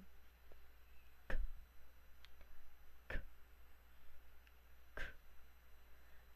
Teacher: Ang letrang K naman ay velar at pasara na walang tinig